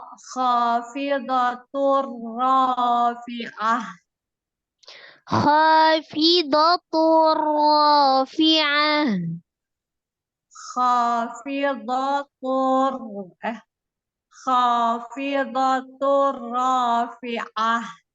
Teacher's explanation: Dengan tidak berdengung. Tanwin ketemu dengan ro-nya idgham bila gunna, ditasdidkan ke huruf ro tapi tidak disertai dengan dengung. Terus itu ro-nya takhim.